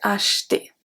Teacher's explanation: acheter, we don't pronounce the E in the middle. We don't say acheter, acheter.